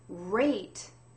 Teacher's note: don't touch your tongue to the roof of your mouth because if you touch your tongue to the roof of of your mouth it's going to sound like the l sound